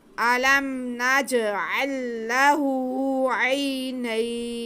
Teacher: तो यहाँ पे हम मद करेंगे, वक्फ हम खींच के करेंगे। इस मद को हम कहेंगे मद आरिज़ लीन